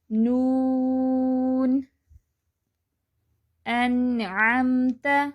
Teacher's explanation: لام کے مخرج سے تھوڑا نیچے نون کا مخرج ہے۔